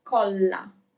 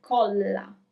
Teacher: you need to stress a little bit where you have the double L, colla. There are two L's, okay?